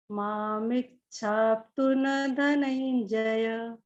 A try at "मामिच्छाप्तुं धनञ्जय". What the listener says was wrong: Great मैम, बस आपका मामिट छाप्तुन में न पूरा आ गया, ये आधा ना होगा। मामिट छाप्तुन धनंजय।